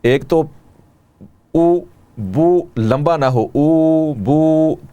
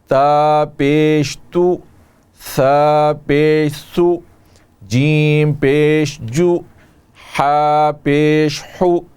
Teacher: پیش کی ادائیگی میں ہونٹوں کو گول کیا جاتا ہے، تو ہونٹوں کو گولائی دیجئے